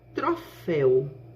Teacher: este é a vogal e o o é a semivogal porque o ditongo aberto que ele vem acentuado com acento agudo que marca o som mais aberto para esta vogal · nós teremos 2 sílabas sendo que a última sílaba ela é composta por um ditongo aberto, U. Este é a vogal e o U é a semivogal.